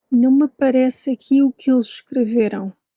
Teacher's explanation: That first A in aparece tends not to be heard